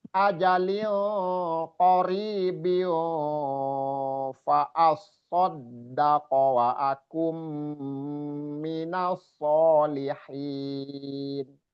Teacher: Wa akum nun sukun bertemu mim juga idgham bi gunnah